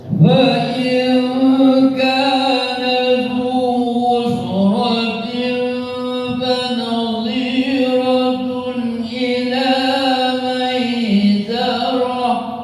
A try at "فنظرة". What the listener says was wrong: Jangan banyak, pendek saja.